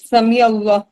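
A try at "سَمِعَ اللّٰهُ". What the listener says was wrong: پورا بولے، یہاں پہ آخر تک حرکت لگائیں. یہ گرامر کی کلاس ہے، قرأت کی نہیں.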